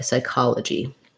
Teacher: You could also write it with this way, sigh. And then my stress is on ka. Open ah vowel.